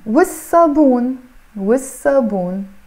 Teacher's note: So I'm not pronouncing the lam here, okay? So wassabun, literally you are saying w and s l basically, which means the, and sabun means soap. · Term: sun letter